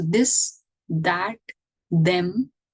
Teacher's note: All these are your voiced TH sounds.